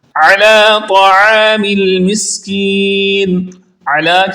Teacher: علی کی عین کو حلق کے درمیان والے حصے سے نکال کر پڑھیں گے۔ حروف مستعالیہ میں سے ہے، اس کو پر پڑھیں گے موٹا، اور اس کے بعد پھر عین ہے اس کو درست پڑھیں گے۔